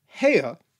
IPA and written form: he:ə (hēo)